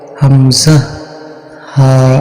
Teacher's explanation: বিবরণ আরবি হরফ 29 টি মাখরাজ 17 টি এক নং মাখরাজ কণ্ঠনালীর শুরু হইতে উচ্চারিত হয়